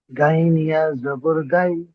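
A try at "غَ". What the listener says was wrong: গাইন নয়, গইন। মুখ গোল হবে। গইন ইয়া জাবার গই।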